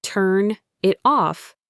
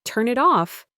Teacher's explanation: The N in turn links to the I in it and the T in it links to the O in off. It becomes a single smooth unit of sound.